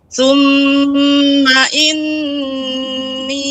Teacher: nun tasydid itu gunnah pada nun dipanjangkan